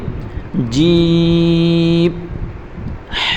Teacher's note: دیکھیں جیم کو کھینچ کر پڑھیں گے